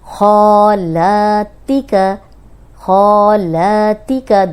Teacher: خو کو موٹا پڑیں گے اور باقی حرف باریک ہے · خو بھی لمبا ہو رہا ہے، موٹا بھی ہے اور لمبا بھی ہو رہا ہے کیونکہ 2 حرکات لمبا کریں گے.